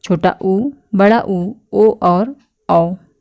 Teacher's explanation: और फिर आते हैं वृत्तमुखी, इनके उच्चारण में ओठ गोलाकार होता है। इनको बोलने में हमारा ओठ जो है वो बिल्कुल गोल हो जाता है